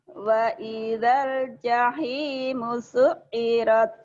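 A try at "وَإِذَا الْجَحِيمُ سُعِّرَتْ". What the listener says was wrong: Kurang. Su'irat. Kurang nekan, kurang nyamber ya.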